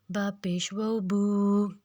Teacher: با الٹا پیش بو، با الٹا پیش بو، اس کو بھی ہم 2 حرکت لمبا کریں گے۔ واو مدہ کو بھی ہم 2 حرکت لمبا کریں گے